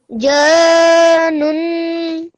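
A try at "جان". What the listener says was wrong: Try and do that a little bit longer. Try to think up to 4 seconds while you're doing it.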